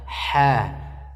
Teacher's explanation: Ada ha tipis, ha di tengah-tengah tenggorokan.